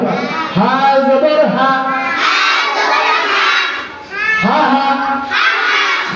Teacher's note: হা উচ্চারিত হবে মুখের খালি জায়গা থেকে